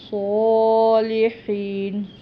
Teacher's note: صاد ادا کرنا ہے، ہا جو ہے یہ حلق سے ادا ہوگا